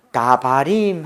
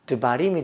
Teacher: 강세에서 멀어진 이 달렛에 아가 빠지고 그 쉐아가 붙은 겁니다. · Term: 모음 약화 현상